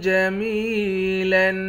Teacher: یا حروف مدہ ہے، ایک الف کے مقدار کھینچ کر پڑھیں گے۔ آخر میں دو زبر کی تنوین ہے، دو زبر کی تنوین میں جب وقف کرتے ہیں ایک زبر بن جاتا ہے۔